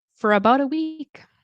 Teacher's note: But in this example, I'm going to say fur, okay? Because it's reduced. Ends with an R. So it's kind of scooting over to start this vowel sound for about a week.